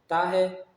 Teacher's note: زبان کی نوک اور اوپر کے دانتوں کی جڑ جب آپس میں ملتے ہیں تو تا ادا ہوتا ہے، تو یہ زبان کی نوک اور اوپر کے دانتوں کی جڑ تا کا مخرج ہے، یعنی تا کے نکلنے کی جگہ ہے۔